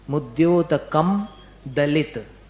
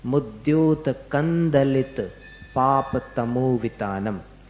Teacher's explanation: म और द का मेल नहीं बनता, तो उसका उच्चारण करना पड़ेगा न के समान। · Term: अनुस्वार